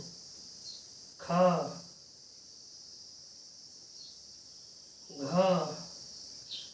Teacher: उच्चारण में अधिक वायु का निष्कासन हो उसे महाप्राण कहते हैं महाप्राण में अधिक वायु का निष्कासन हो